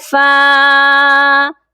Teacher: فا کو ایک الف کے برابر لمبا کر کے پڑھیں گے کیونکہ فا کے ساتھ ایک الف ہے۔